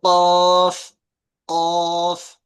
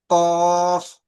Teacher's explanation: জিভের পুরো গোড়া থেকে বলেন কফ, ভিতর থেকে বেরিয়ে আসছে